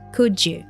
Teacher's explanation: the combination of letters d plus y gives us a j sound